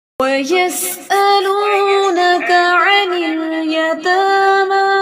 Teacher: عین کے مخرج پہ فوکس کرنا ہے، اور یس سین کی سیٹی اور حمزہ کی سختی